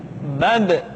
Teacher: Ketika mati, maka terdengar suara pantulan